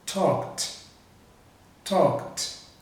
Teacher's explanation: não tem vibração também, então você vai pronunciar o ed com som de T